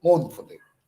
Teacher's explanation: Accented syllables followed by two unaccented syllables. An accented syllable followed by two unaccented. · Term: dactyl